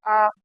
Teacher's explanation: दूसरा, दीर्घ स्वर। दीर्घ स्वर जिनके उच्चारण में ह्रस्व की अपेक्षा दुगना समय लगे।